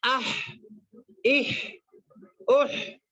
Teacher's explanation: ہا، ہا جو ادا ہوتا ہے حلق کے درمیانی حصے سے ادا ہوتا ہے. حلق کے درمیانی حصے سے ہا ادا ہوتا ہے